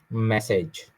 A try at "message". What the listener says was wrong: Ma is wrong. Message. A sound again. Message. Message.